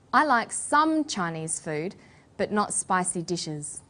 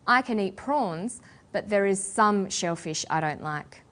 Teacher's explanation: to talk about a restricted or limited amount of something we put the stress on the word some